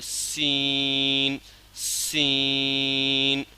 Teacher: سین سیٹی والی حروف میں سے ہے تو اس میں سے تھوڑا سا سیٹی کی آواز نکالنا ہے اور کھینچنا ہے۔